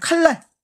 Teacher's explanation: 니은이 앞에 있는 리을의 영향을 받아서 리을로 바뀌겠죠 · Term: 순행동화